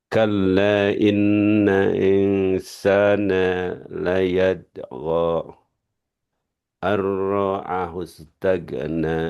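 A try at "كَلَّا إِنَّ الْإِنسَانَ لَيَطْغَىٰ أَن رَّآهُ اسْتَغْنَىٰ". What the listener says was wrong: Ini tadi kol-kolahnya kurang. Layat tuh.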